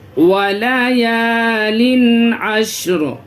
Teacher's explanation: حروف حلقی کے 6 حرفوں میں سے تنوین کے بعد عین ہے، اس کی وجہ سے یہاں پہ ناک میں آواز روکیں گے نہیں، تنوین کی آواز کو ظاہر کر کے پڑھیں گے۔ ولیال عشر، ولیال عشر نہیں پڑھیں گے، یہاں پہ تنوین کی آواز کو صاف ظاہر کرنا ہے۔